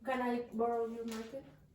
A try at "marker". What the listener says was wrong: Yes, but it's not a market. Okay, they're completely different words.